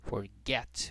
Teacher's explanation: O mais forte é esse aqui, ó, get. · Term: sílaba tônica